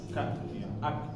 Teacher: Ketika sukun maka dibaca anginnya ya atau keluar angin ya. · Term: hamas